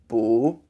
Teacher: the Chinese U has a it's a taller vowel and you have more space your mouth so boo imagine you have a ball in your mouth so